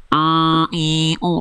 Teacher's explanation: dari tengah-tenggorokan dia melipir ke rongga hidung sehingga ada suara dengung di sana jadinya sengau gitu. Nah, jadi jangan sampai masuk hidung.